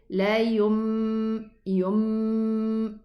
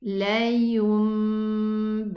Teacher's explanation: Don't say la yum. No, just touch the lips together to allow the meme and then the ba to be pronounced